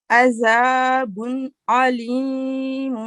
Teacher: عین یہ middle of throat ہوتا ہے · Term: حروف حلقی